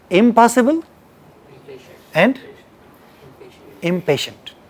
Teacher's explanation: a nasal sound and its following consonant, they must come from same place of articulation, right? This rule is not specific to Hindi alone.